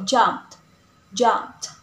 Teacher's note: we use ed is T after voiceless. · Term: ed ending